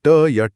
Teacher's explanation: मूर्धा वो कठोर हिस्सा है जो आपके ऊपरी दांतों के मसूड़ों के ठीक पीछे तालू की शुरुआत में होता है। जब आप ट या ठ बोलते हैं तो आपकी जीभ पीछे की तरफ मुड़कर उस कठोर हिस्से पर चोट करती है। ये दांतों को बिल्कुल नहीं छूती। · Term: मूर्धन्य